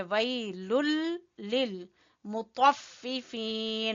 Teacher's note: बिस्मिल्लाहिर्रहमानिर्रहीम। वैलुल लिल, लुल लिल बगैर गुन्ना हो रहा है, यहाँ पर इदगाम करेंगे बगैर गुन्ना के। वैलुल लिल ऐसे मिलाएंगे, वैलुल लिल मुतफ्फिफीन, तो को पुर पढ़ना है, ठीक है।